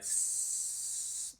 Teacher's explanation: there's no vibration coming from the chest and the throat area which is not creating any kind of buzzing sound so some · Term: voiceless sound